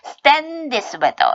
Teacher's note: S 사운드 뒤에 다시 또 무성음 나왔어요. 그래서 요건 쌍자음으로 바꿔주세요.